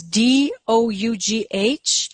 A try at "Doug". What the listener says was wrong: One too many H. It's just Doug. Yeah, Doug, not Doe. Doug.